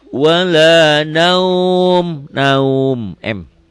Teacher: Jangan lupa nutup mulut ya. Kalau enggak tertutup mulutnya wala naun. Ya, bibirnya mingkemin.